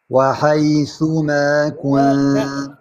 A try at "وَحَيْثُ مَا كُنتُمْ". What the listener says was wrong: عندك همس بالياء عندك همس عندك همس بالراء